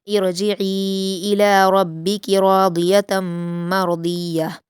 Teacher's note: راضیتن میں را اور ضاد کو پر پڑھیں گے ، اور مرضیہ میں بھی را اور ضاد کو پر پڑھیں · हमज़ा को ज़ेर देकर रा से मिलाकर पढ़ेंगे